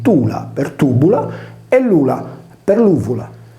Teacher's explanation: Nel sardo logudorese, solitamente la consonante B o V intervocalica in sillaba atona decade per sincope